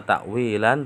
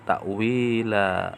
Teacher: bunyinya seharusnya takwilan tapi karena di akhir kalimat menjadi dibaca panjang dua harakat